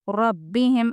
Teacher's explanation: اگر یہ تینوں نہ ہوں تو ہم بولیں گے جزم والے حرف کو پیچھے والے حرف سے ملا کے پڑھیں گے۔ ربہم، اور را کو پور پڑھیں گے کیونکہ اس کے اوپر زبر ہے